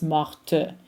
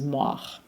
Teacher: If you are pronouncing the feminine form, you're going to pronounce the T. It's morte. If you are pronouncing the masculine form, the T is silent. It becomes mort.